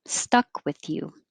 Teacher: just single syllable and i wouldn't release the k